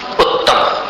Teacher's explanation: उ और ऊ, इनके लिए दोनों होठों का सहारा लेना पड़ता है।